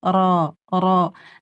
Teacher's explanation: dia dibacanya tebal ujung lidah ke gusi belakang. Ro ro dan pangkal lidahnya naik.